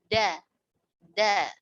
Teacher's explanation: Dari ujung lidah bertemu pangkal gigi seri atas. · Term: huruf dal